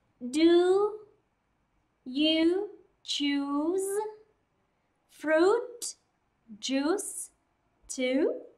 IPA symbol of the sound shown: u: